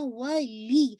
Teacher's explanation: میو ولی یوں, ٹھیک ہے, میک شور کرنا ولی, لام پہ تھوڑا سا اسٹریس دیتے ہوئے پھر آپ نے جو ہے مرج کرنا ہے واو کے ساتھ